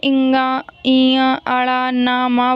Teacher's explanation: जब इन्हें इंगा, इया, आड़ा, ना, मा बोलते हैं तो इनका उच्चारण नाक से भी होता है, इसलिए इन्हें वर्गीय उच्चारण के साथ साथ नासिक भी कहा जाता है